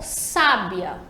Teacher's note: A sílaba tônica é o sa, a primeira sílaba, sa, sábia, e identificada ali pelo acento, sábia.